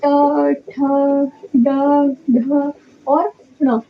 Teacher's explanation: तो ट वर्ग का उच्चारण स्थान मूर्धा होती है।